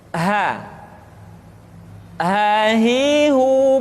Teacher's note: Luwe minimun imawi Wow Ni Wa Wa Hai selanjutnya huruf H dikeluarkan dari tenggorokan yang terjauh sama seperti kita mengucapkan huruf a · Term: huruf ha